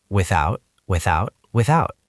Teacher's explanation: The stress is on the second syllable, without.